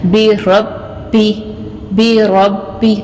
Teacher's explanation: را کو پر اور موٹا پڑا جائے گا، اور با کے اوپر شد ہے، شد کے ساتھ اس کو سختی سے ادا کیا جائے گا